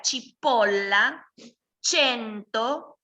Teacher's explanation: si ustedes tienen el sonido palatale, que se produce en el paladar, es un sonido suave.